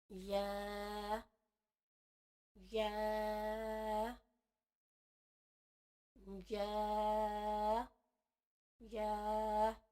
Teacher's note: جوف دہن سے مراد منہ کا خالی حصہ. یا جو ہے وہ منہ کے خالی حصے سے ادا ہوگی